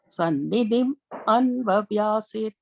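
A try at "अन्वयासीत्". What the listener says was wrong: Anvayasit. I think you're saying Anya, I heard. Anvayasit.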